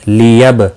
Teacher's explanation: با ساکن پر قلقلہ ہوگا